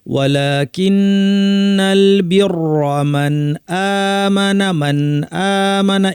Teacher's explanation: নুনের উপর তাসদীদ লম্বা গুন্না, লামের উপর ছোট আলিফ আছে